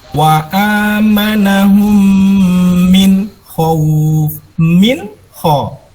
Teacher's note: Yang pertama, idhar, ketika ada nun sukun atau tanwin berhadapan dengan salah satu huruf ghain, ain, hamzah, ha, kho, dan ha. Nah, maka nun sukun dengan suara jelas, tidak boleh mendengung.